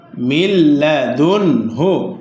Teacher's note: এই নুন সাকিন গুন্না হয়নি